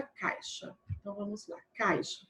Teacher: encontro aqui de sons vocálicos ou seja de uma vogal e uma semivogal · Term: ditongo